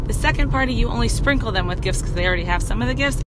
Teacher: she says 'cause instead of because. This is very casual English and quite common